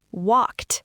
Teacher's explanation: Listen to that cluster. A K and a T smashed together.